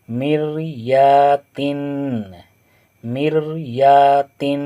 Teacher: रा अगर साकिन हो और उससे पहले ज़ेर है तो रा को बारीक पढ़ेंगे।